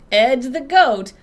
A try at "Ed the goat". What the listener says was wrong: Ed the goat. You have to really get that D in there. Ed the goat. No, not dida. It's just Ed the goat.